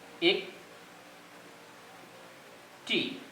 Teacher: এই শব্দের প্রথম এ ধ্বনিটি উচ্চারণকালে আমরা ঠোঁটটাকে অপেক্ষাকৃত চাপানো অবস্থায় রাখি, ফলে এর উচ্চারণটি হবে এরকম: এক টি। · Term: সংবৃত উচ্চারণ